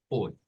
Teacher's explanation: es como una O pero no es la o completa es una o como recortada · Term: sonido OI